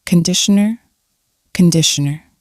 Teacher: the first vowel is ah